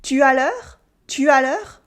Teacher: I just put a question mark at the end of the affirmative sentence and my voice goes up